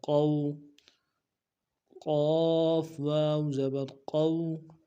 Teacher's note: واو لین کو بالکل نہیں کھینچیں گے، واو مدہ کو کھینچ دیتے ہیں، اس کو نہیں کھینچیں گے۔